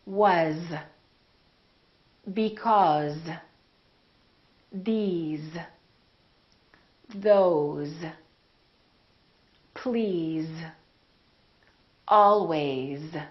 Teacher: some very common words that we use all the time that are spelled with an S and pronounced with the Z sound